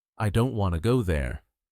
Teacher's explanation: Now the important words in this sentence are stressed are said strongly don't go. Now the smaller words like I to there are said more softly or quickly